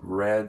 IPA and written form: rɛd (read)